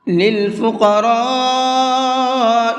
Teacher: للفقراء، قاف کو مبھر کے پڑھیں گے اور را کو بھی مبھر کے پڑھیں گے، اور یہاں پر یہ بڑا مد ہے، اس مد کو مد متصل کہتے ہیں، اور مد متصل کو 4 سے 5 الف کی برابر کھینچ کر کے پڑھتے ہیں۔ 4 سے 5 الف کی برابر کا مطلب ہے 4 سے 5 سیکنڈ تک کھینچیں گے اس کو۔